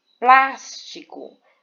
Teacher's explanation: a sílaba tônica é a antepenúltima por exemplo plástico veja que Plus é a sílaba mais forte e ela vem antes da penúltima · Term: proparoxítonas